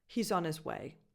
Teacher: The vowel in he is a tense E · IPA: [i]